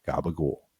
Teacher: C sounds, which are really K sounds, become voiced, so they turn into G. · the second to last vowel, an O sound gets raised. So change that to an U and toss out the last syllable.